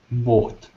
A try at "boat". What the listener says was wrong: And when you're saying it, it's båt. And it's sort of a deeper sound, but mine is sort of short and high. Boat.